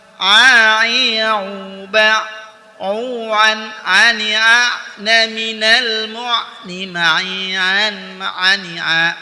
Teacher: Huruf Ain dikeluarkan dari tenggorokan bagian tengah seperti kita mengucapkan huruf H.